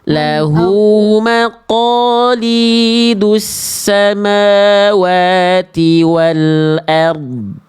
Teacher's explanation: Jangan lupa pangkal lidah ya. Jadi ro dan dot di sini dibaca tebal. Angkat pangkal lidahnya Bunda.